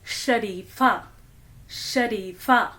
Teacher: जब हम शरीफा बोलते हैं तो हमारा टंग पैलेट को छूता है। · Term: तालव्य श